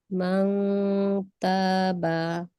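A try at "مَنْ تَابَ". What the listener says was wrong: মাশাআল্লাহ, সুন্দর হয়েছে।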